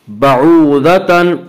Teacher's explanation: بعوضتن واو مدہ، واو مدہ وہ واو جو ساکن اس سے پہلے پیش ہو، واو مدہ کو ایک الف کی مقدار کھینچ کر پڑھتے ہیں۔ بعوضتن ضاد کو پر پڑھیں گے، ضاد حروف مستعلیہ میں سے ہے